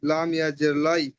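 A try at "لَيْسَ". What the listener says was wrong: জের লাই হবে না, জের হলে লাই কি করা হবে?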